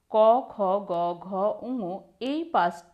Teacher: উচ্চারণ করার সময় আমাদের জীভের পিছনের অংশ কোমল তালু স্পর্শ করে শ্বাসবায়ুতে আংশিক বাধা দেয় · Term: কণ্ঠ ব্যঞ্জন